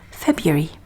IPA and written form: ˈfebjʊri (February)